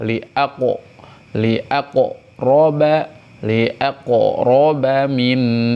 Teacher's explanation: Nah, qalqalah li aqo, qalqalah ya. Qalqalahnya pantulkan ke arah suara fathah.